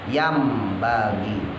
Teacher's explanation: apabila ada huruf nun sukun atau nun mati bertemu huruf ba berharokat hidup ya, maka dilebur makhrajnya dari nun ke ba, berarti menjadi mim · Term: iklab